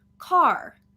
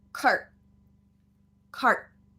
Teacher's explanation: control vowel the r sound gets cut short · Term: stop t